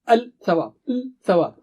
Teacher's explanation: ملاتے وقت زبان کی نوک کو جلدی سے حرکت دینی پڑتی ہے، کیونکہ لام اور ثا کا مخرج، دونوں کا مخرج زبان کی نوک ہے · آسانی کے لیے لام کو قربان کر دیا جاتا ہے اور ثا پر تشدید لگائی جاتی ہے۔ الثواب، لام پر حرکت نہیں تو آواز نہیں۔ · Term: شمسی حروف